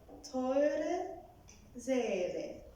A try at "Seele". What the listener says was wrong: No, it's like A. It's one A. A long one. Seele. But you are doing I. You're doing Ze. You're doing something with the tongue. It has to be Seele.